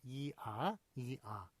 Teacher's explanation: 혀가 위에서 아래로 내려가는 것